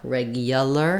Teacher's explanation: sometimes that oo gets a little reduced and it might sound more like a Y, regular instead of regular. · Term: Y glide